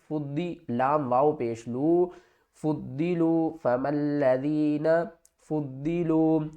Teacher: فا کو دواد کے ساتھ ملائیں گے، دواد کو موٹا بھی پڑھیں گے اور سختی کے ساتھ بھی پڑھیں گے.